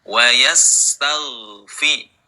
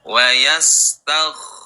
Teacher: Ghain sukun, suaranya mengalir. Jadi yang mengalir itu suara, bukan nafasnya. Kalau nafas yang mengalir nanti berubah menjadi kha.